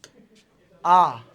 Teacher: आ के उच्चारण में मुंह कैसा है? पूरा खुला है।